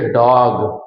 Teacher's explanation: यह आ तथा ओ के बीच की ध्वनि है